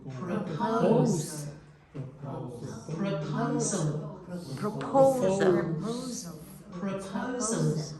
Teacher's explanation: the next word has all the stress in the middle syllable, and that vowel is O. The other two syllables become weak.